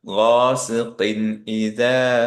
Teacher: এখানে খেয়াল করে দেখেন কফে তানউইন থাকার পরও পরে যেহেতু হামজা, এর জন্য হালাকি লেটার, এর জন্য আমরা এখানে কোনো গুণনা দিব না, রাইট? কোনো গুণনা হবে না, ক্লিয়ার নুন ইজহার।